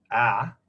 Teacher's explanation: The bottom one, EA, was probably said ah, where my tongue is moving from the bottom left, ah, sort of up towards the middle where schwa would be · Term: falling diphthongs